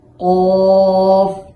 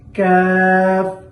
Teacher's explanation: কফ মোটা জিহ্বার গোড়া থেকে, কাফ পাতলা জিহ্বার গোড়া থেকে একটু আগে বাড়াইয়া।